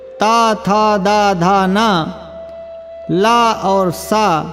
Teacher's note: ये दंत्य वर्ण हैं, इनका उच्चारण स्थान दंत है